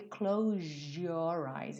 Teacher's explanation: Então esse S que teria um som de Z, na verdade, ganha um som de J.